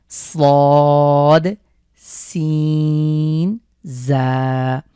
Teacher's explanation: আমাদের জিভের আগা সামনের নিচের দুই দাঁতের সাথে দিতে নিচের দুই দাঁতের আগার সাথে লাগিয়ে উচ্চারণ করতে হবে